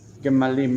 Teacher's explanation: I didn't point out in the verse that I did just a minute ago that the word gamal has an interesting plural in that the first syllable reduces, the second one becomes a closed syllable with a doubled lamed and then im